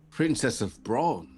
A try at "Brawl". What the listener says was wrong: Brawl. There's an L at the end. B-R-A-L. B-R-A-L as in lacrosse.